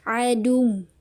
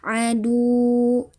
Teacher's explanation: Dinaikkan intonasinya atau dimasukkan ya. Ada peningkatan intonasi ketika kita memasukkan dal ke wawunya. Jadi adung. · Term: dinabarkan